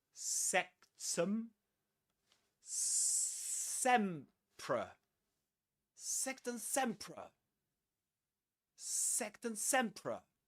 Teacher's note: There's a schwa there in the second syllable.